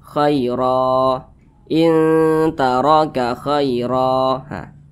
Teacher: memutus bacaan pada huruf ro atau berwakaf di huruf ro maka huruf ro kita panjang kita panjangkan dua harakat atau kira-kira dua ketukan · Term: mad iwad